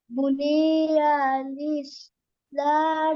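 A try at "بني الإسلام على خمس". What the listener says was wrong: উনি উনি টান নাই, বুনিয়াল ইসলামু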